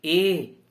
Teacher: कंठ से ध्वनि निकल रही है, लेकिन तालु को स्पर्श करती हुई बाहर निकल रही है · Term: कंठ तालु